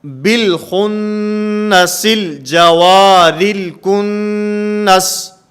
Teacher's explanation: اور اگر کلمہ کے درمیان میں ہو تو حمزہ وصلی گر جاتا ہے